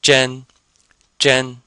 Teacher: so it sounds like Jen and this is first tone